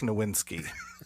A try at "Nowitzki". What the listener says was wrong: You said his name wrong. You said Nowitzki. Yeah, but you said you had an N in there. Yeah, that's kind of how you said it.